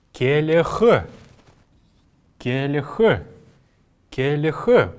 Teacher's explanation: букву л мы здесь произносим очень мягко